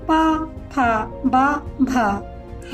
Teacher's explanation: आपके दोनों होंठ इनके उच्चारण में आपस में टकराएंगे, इसीलिए इन्हें ओष्ठ्य कहते